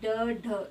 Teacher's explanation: जब हम इनका उच्चारण करते हैं तो जीभ पहले हमारे तालु को स्पर्श करती है और फिर झटके से लुढ़कर नीचे वाले दंत मूल को स्पर्श करती है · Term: उत्क्षिप्त व्यंजन